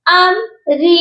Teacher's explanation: اور یہاں پر اکثر لوگ غنہ کرتے ہیں، اس میم ساکن پر غنہ نہیں ہوگا، یہاں پر اظہار شفوی ہوگا